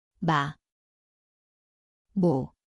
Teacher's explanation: Zvuči kao M. Mjesto je oba usna, nosno.